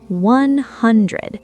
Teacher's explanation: The stress is on hun.